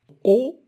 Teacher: c'est une voyelle orale ouverte, postérieure, arrondie.